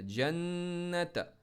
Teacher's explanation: نون پر تھوڑا سا پاز کر کے زور لگا کے رکھنا ہے، ناک سے آواز نکلے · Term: غنہ